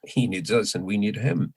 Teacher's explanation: the important thing here is that us and him are not weak forms anymore uh but strong forms because i'm trying uh to convey contrast